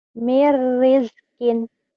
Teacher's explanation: Nun mati atau tanwin ketemu ro idgham bila guna